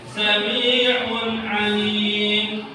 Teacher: tidak boleh dibaca dengung atau gunnah, harus dibaca idhar. Idhar itu artinya jelas, harus jelas